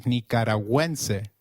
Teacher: gü when followed by another vowel like in güe, is pronounced like Gw in Gwen